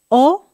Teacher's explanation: Tenemos la O es muy redonda